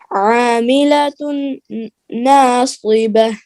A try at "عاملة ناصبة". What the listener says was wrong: غنہ کیجئے, پھر پڑھیے.